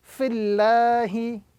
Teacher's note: if the vowel coming before the word Allah is a kasra, the word Allah must be pronounced with a flat sound